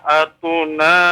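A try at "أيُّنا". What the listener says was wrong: Ayyuna, titiknya 2 di bawah, bukan 2 di atas ya.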